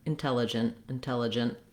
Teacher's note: You don't necessarily have to say the T at the end of intelligent, but you do need to cut it off quickly. So you don't want intelligent or intelligent with a strong T. · You might make a little bit of a stopped T there. And then if you're linking and using the word in a sentence, the T will follow the rules that happen for the T at the ends of words.